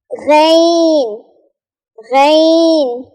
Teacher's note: غین ادنا حلق سے ادا ہوتا ہے, یعنی ادنا ٹاپ آف دا حلق سے ادا ہوتا ہے.